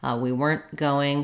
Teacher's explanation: so I might use that unreleased T if the next word starts with a consonant sound